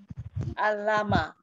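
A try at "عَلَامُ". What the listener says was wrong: Membacanya bukan alama tapi alamu gitu ya. Alamu. Seperti wau di atas itu bacanya u, bukan bacanya a.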